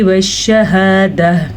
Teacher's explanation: हा को सीने के अंदर से निकालना है, ना कि हलक के दरमियान से या शुरू के हिस्से से। हलक का आखिरी हिस्सा जो सीने के साथ टच होता है उधर से हा निकलता है और गोलता जब वक्फ की कंडीशन में आए तो भी हा बन जाती है।